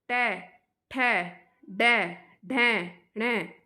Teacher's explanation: आपकी जीभ है वो ऊपर जा रही है, मूर्धा पे जा रही है, तो मूर्धन्य। टै, ठै, डै, ढै, णै, तो ये आपके 5 हो गए।